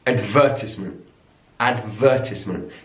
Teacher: in British English advertisement advertisement stresses on the second syllable